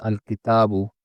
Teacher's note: I pronounced al-kitabu with a clear lam sound.